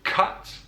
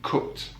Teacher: one feature that divides rp and southern accents from northern english accents is the ah sound in rp you have a whereas in the north of england it's just uh